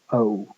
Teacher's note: starting near to schwa and ending somewhere closer to the U vowel.